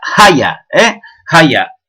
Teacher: Eso es uno de los rasgos orientales, esa aspiración de la F inicial